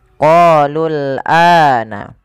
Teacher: Kemudian pada lafal ana, a-nya dipanjangkan 2 harakat. Adanya alif jadi setelah huruf hamzah ini menandakan bahwasanya ia dibaca dengan mad badal. · Pada lafal qalul ini qa panjangkan 2 harakat karena ia mad tabi'i. Kemudian lul ini tidak boleh dipanjangkan karena waw alifnya dianggap tidak ada, langsung ke huruf lam yang disukunkan